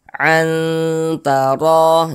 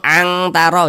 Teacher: cara membacanya itu dia lebih condong berbunyi n tapi disamarkan. Jadi dia lebih tinggi kadar samarnya dibandingkan dengan kadar dengungnya begitu. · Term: ikhfa hakiki aqrab